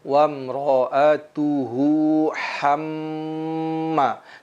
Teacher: Kita tahan mimnya karena dia adalah termasuk huruf gunnah dan dia bertasdid